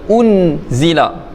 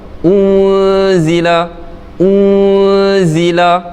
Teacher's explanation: Nun mati bertemu zai di sini hukumnya ikhfa hakiki, dibaca dengan dengung yang samar.